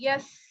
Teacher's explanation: سین پہ سیٹی آئے گی